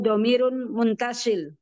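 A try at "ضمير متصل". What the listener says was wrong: Bukan muntasil, tapi muttasil.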